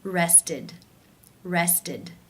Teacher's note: the ED is pronounced as the I as in sit with the D sound